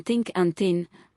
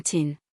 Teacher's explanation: the contrast between the voiceless th sound as in think and thin and the letter t sound as in tin